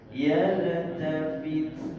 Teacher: Ta ini kita kena keluarkan angin sikit sebab ni adalah huruf hamas.